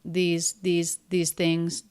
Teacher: the s in these is a Z sound